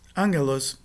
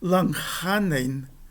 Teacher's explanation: antes de uma gutural, a nasal, que é o primeiro gama, será uma nasal gutural